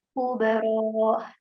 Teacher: untuk huruf ro itu panjang tapi tidak boleh ada suara tambahan H